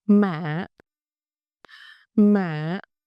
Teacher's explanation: It's a dipping tone. It starts low, raising a bit, then dips slightly. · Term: thanh hỏi